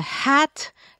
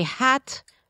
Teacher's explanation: put your hand in front of your mouth when you say hat you feel some air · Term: aspirated H